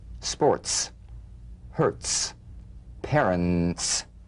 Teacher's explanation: Feel a crisp, percussive hiss between the tip of the tongue and the teeth.